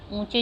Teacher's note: ऊंचे जो है वह भी आपकी नाक में से आएगा साउंड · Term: अनुनासिक